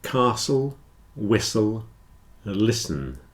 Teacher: the t is not pronounced especially in Words with a STL spelling